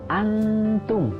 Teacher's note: nun sukun bertemu dengan ta, hukumnya adalah ikhfa, artinya samar. Dibacanya dengan dengung, ditahan dulu 2 harokat.